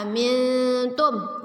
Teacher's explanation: nun sukun bertemu dengan ta. Ya, ikhfa kita baca samar ditahan 2 harokat.